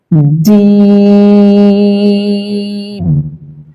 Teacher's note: এই হরফটা তিনলিপ টান হবে এবং এটি উচ্চারণ হবে জিহ্বার মধ্যখান তার বরাবর উপরের তালুর সঙ্গে লাগিয়ে। জিম। 3 থেকে 4 লিপ টান দিবেন।